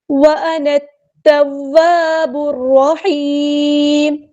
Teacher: نون کو ہم نے تا کے ساتھ ملا دینا ہے. حمزۃ الوصل ہمارا ڈراپ ہو جائے گا.